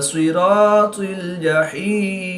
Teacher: زیر کو وقف کی حالت میں ساکن کر کے پڑھیں گے